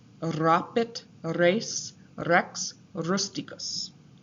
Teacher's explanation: the Romans would roll their R's